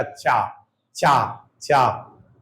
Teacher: जीभ का जब बोलोगे तो देखना जीभ का जो मध्य वाला भाग है ये ऐसे ऊपर उठेगा और तालु में स्पर्श होगा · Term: तालव्य व्यंजन